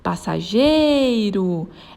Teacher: ela tem a penúltima sílaba tônica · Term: paroxítona